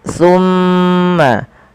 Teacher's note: pada lafal summa tahan suara mimnya sepanjang 2 harakat. Summa jangan langsung dilepaskan karena ia ada bacaan gunnah pada lafal bacaan ini.